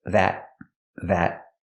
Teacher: And the T in that is a stop T.